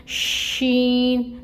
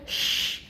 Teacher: جب ہم شین ادا کرتے ہیں تو منہ میں آواز پھیلتی ہے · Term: تفشی